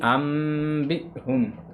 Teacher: حمزہ ساکنہ پہ جھٹکا کرنا ہے